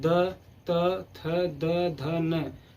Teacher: जैसे त बोलिए तो देखिए हमारा जिह्वा जो हमारे दांत से दांत के पिछले भाग में आके टच कर रहा है